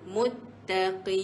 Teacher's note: Tahan sekejap ta sebab ada sabdu tu